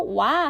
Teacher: 그 반모음 오와 우, w 모음이 결합된 이중모음 같은 경우는 와 같은 경우는 오와 아의 결합이에요. 그래서 와 할 때는 우리가 오 발음을 하면서 아 발음으로 입 모양이 변하기 때문에 이것을 이중모음이다